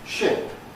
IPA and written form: ʃɪp (ship)